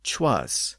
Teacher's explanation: it was common to replace the first person pronoun I with a CH sound in parts of the West country